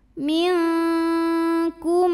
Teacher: Cara baca nun sukunnya adalah samar-samar, siap-siap menuju kaf disertai bunyi dengung. Karena kaf ini makhrajnya jauh dari nun, maka bunyi dengungnya yang besar. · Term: ikhfa ab'ad